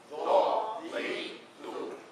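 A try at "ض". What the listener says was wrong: Don't make it like a sound. Don't go three.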